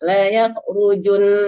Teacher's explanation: La yakhrujun langsung ditasdidkan dan didengungkan, jangan ju-nya dipanjangkan.